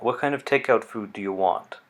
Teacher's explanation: see if you can hear a slight fall in intonation on WH questions.